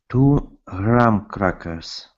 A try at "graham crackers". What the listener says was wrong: Okay, almost. Let's pronounce a good GR. I want you to copy me here. It is grr. Hold the R.